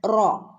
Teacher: ഒന്ന് ഹെവി ആക്കിയിട്ട് റ എന്ന് പറയാതെ റോ എന്ന് ഓതുക